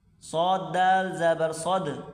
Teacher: صاد کو موٹا کریں اور دال سے ملائیں گے